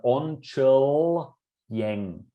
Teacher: we have onchil yang with a non-palatal l and then a y, we can't just say onchil yang, onchil, we can't just stick them together because that would just then be pronounced as onchileng.